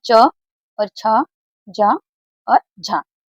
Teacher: ये 4 हमारे क्या कहलाते हैं, स्पर्श संघर्षी व्यंजन।